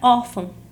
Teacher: a palavra órfão, a sílaba tônica é a penúltima, por isso ela é uma paroxítona